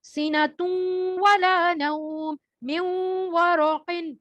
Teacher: اتنی ڈیفینیشن میں نہیں جائیں, جیسے اس کی اگزامپل دیکھیں, سیناتun ولا نوم من ورق, یعنی نون ساکن جو ہے وہ سکپ ہو گیا اور میم کو ہم نے واو سے ملا کے پڑھ دیا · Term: ادغام